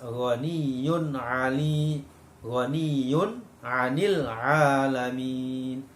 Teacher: Di situ ada tanwin bertemu dengan ain, maka membacanya harus jelas.